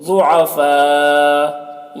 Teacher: اسی کلمہ میں ہے، اس لیے یہاں پر مد متصل ہوگا، مد متصل کو 3 یا 4 الف کے برابر کھینچ کر پڑھتے ہیں